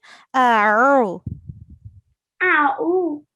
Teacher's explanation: with A'uzu, we have a ayn here. So we have to pronounce it from our throat.